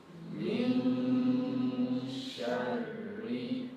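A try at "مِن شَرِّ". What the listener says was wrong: Smile. Sharri. Sharri. So maintain that gesture. Because if you do this, shar. When you do this, I can guarantee it is a mixture of a heavy sound of huruf ra. So be careful of the gesture that you make.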